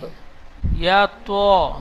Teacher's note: মুখ গোল করে ত, পুর অক্ষর